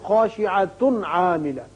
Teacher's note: یہاں اگر ملانا چاہیں تو پھر خاشعۃ عاملہ، یعنی تنوین کے بعد عین ہے اظہار کر کے